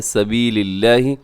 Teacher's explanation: لفظ اللہ کو باریک پڑے گا کیونکہ اس سے پہلے لام کے نیچے زیر ہے